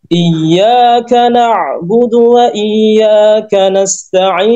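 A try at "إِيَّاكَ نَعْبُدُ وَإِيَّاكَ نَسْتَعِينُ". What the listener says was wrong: Rihwahnya dan hamasnya kurang. Problemnya di situ seperti tadi sama.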